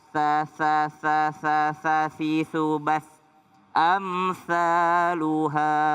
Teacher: Jadi bukan amsyaluha tapi amsaluha. Ujung lidah bertemu dengan gigi atas.